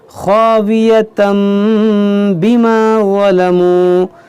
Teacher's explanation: خاویتم یہاں تنوین کے بعد با یہاں پر اقلاب ہوگا، اسی لیے یہاں پر دیکھیں میم ہے